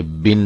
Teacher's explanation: اصل آواز کو بڑھایا نہ جائے، جیسے بن سے بین نہ بن جائے بلکہ بن ہی پڑھا جائے